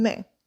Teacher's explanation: you don't need to pronounce the n it's just a nasalization sound at the end of the word